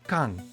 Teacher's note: not in the first position but it's in the final position when Eun is in the final position it's read as NG sound